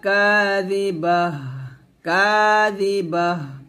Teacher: লাইসা লিওয়াকাআতিহা কাযিবাহ, কাযিবাহ, কাযি জাল সে দি পাতলা করে উচ্চারণ করবেন। অবশ্যই জিহ্বাটা নিচে দাঁতের সাথে লাগাবেন না, জিহ্বাটা উপর দাঁতের আগার সাথে লাগাবেন